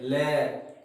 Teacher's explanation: इसमें ऑर्गन के सेंटर में एक बार ब्लॉकेज आता है, जीभ माउथ ऑर्गन के रिज को टच करती है और सडनली फिर हवा पार्श्व से बाहर निकलती है, ले। इसका मतलब अपने जीभ के साइड में से, कोई से भी साइड में, इसको पार्श्व कर देते हैं, हवा बाहर निकलती है। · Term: लेटरल